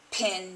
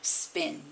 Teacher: when the /p/ sound begins a word there is no - there's a puff of air. and when it follows a consonant at the beginning of a word there's - the puff of air is swallowed. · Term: allophone